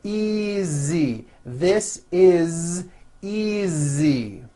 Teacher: easy again the S is like a voiced Z